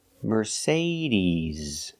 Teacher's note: is not s like Star it's Z like zebra Mercedes Mercedes put the stress on the second syllable